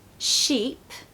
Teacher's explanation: sheep has got to be longer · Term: long vowel